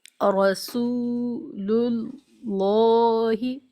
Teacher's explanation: رسول اللہ کے لام کو موٹا پڑھیں گے کیونکہ لفظ اللہ کے لام سے پہلے پیش ہے